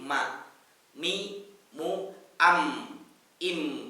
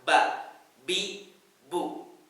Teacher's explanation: Mim persis banget dengan huruf ba. Bedanya apa? Melibatkan rongga hidung. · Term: huruf mim